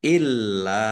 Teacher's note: Lamnya dibaca dobel, ada tasdidnya ditekan illa lam fathah alifi panjang dua harakat.